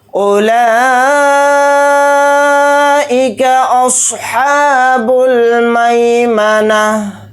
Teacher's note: یہ جو اوپر مد ہے یہ مد متصل ہے، اس کو 4 الف کی مقدار لام کھڑا زبر لا کے ساتھ کھینچ کر پڑھیں گے